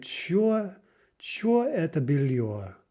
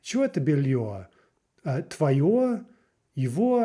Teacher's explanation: Russian, when you're asking questions, the intonation tends to rise very sharply and then fall again on whatever word is the point of the question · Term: rising and falling intonation